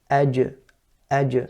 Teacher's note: The middle of the tongue with the upper palate, that's what separates to create or to pronounce the qalqala. Aj. So that separation is the qalqala.